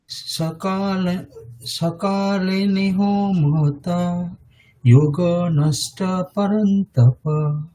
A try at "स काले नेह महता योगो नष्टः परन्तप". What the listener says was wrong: দীর্ঘ উচ্চারণগুলো খেয়াল রাখতে হবে। কালে নে তিনটেই দীর্ঘ, তারপরে মহ তায়োগো তিনটেই দীর্ঘ, ঠিক আছে। সকালে নেহ মহতা योगो नष्टः परन्तप।